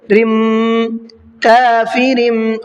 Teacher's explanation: جب تنوین کے بعد میں با آتا ہے تو وہاں پر ایک چھوٹا سا میم بنا ہوا ہوتا ہے، جہاں پر اس تنوین کی آواز کو نہیں نکالا جاتا بلکہ میم کی آواز کو نکالا جاتا ہے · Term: اقلاب کا قاعدہ